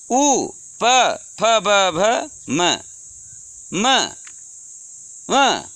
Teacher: जब तक आपके दोनों ओंठ स्पर्श नहीं करेंगे तब तक हम इस वर्ग के वर्णों का उच्चारण नहीं कर सकते हैं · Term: ओष्ठ